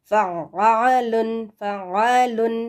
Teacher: عین کو تھوڑا سا اندر سے حلق کے بیچ میں سے آپ نے نکالنا ہے آواز